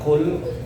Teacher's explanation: Qul pakai qaf, itu ada rasa kayak di tenggorokan keluar, qul.